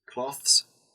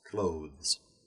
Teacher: from th with air, to the voiced th sound